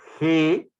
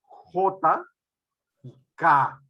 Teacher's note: dorso de la lengua se contrae hacia la zona vela por eso que esta es consonante se llaman consonantes de lares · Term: consonantes veladas